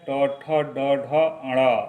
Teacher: टवर्ग जो मूर्धा से बोला जाता है। ट ठ ड ढ अण, इसे मूर्धन्य कहा जाता है।